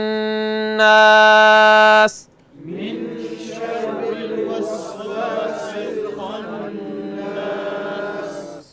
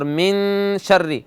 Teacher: اور من شر، نون ساکن ہے، اس کے بعد کیا ہے شین. شین شین حروف حلقی میں ہے یا نہیں؟ نہیں ہے، تو غنہ کریں یہاں